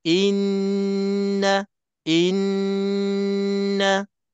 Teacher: tekan panjang dua harakat bagi puas betul-betul · Jadi cara bacaannya inna inna, kena tekan panjang 2 harakat bagi puas betul-betul bunyinya berdengungnya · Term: wajib dengung, wajibul gunnah